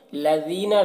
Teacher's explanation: دال کو باریک پڑھیں گے اور یہاں پر یا مدہ ہے، اسے ایک الف کے برابر کھینچ کر پڑھیں گے